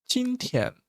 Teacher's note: when the two the same tone in one word we usually say first a bit higher